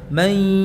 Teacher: pada saat memasukkan nun sukun pada ya-nya itu tampakkan ya, perjelas gunnahnya. Mai, bukan mai.